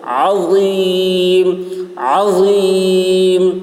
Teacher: عین حلق سے، غا کی آواز موٹی ہوگی